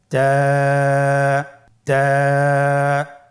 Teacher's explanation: তায়ের মাখরাজ কোন জায়গা থেকে? জিহ্বার আগা সামনের উপরের 2 দাঁতের গোড়ার সঙ্গে লাগিয়ে উচ্চারিত হয়।